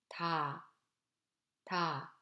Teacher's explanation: T has the sound value of the English T sound, basically voiceless sound with no aspiration and tenseness, but lightly voiced between voice sound as T. The sound T in the single word TA is voiceless soft sound with no aspiration